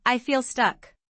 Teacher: When you say I feel stuck, notice the linking. I feel stuck sounds like I feel stuck because the L links to the next word.